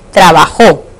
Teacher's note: Esta palabra es aguda porque la mayor fuerza de voz recae sobre la última sílaba. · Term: palabras agudas